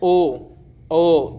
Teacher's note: जब भी हम ओ बोलेंगे तो हमारे होठ दोनों एक मतलब गोल शेप बनाते हैं